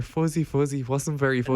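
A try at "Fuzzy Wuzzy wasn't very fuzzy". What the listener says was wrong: No, you didn't get it. You said fuzzy fuzzy.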